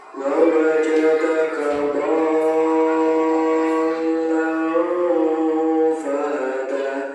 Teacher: huruf do ini dibaca panjang, tiga alif atau enam harokat. Kemudian langsung masuk ke huruf lamnya karena di sini ada tanda tasydid.